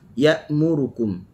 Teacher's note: Kalimah ya'murukum, huruf hamzah ya terus berhenti. Kenapa? Kerana ianya bersifat dengan syiddah.